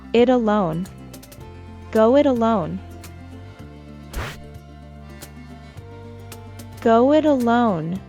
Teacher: in an American accent, as the T is between two vowels, I and A, we'd pronounce it as a fast sound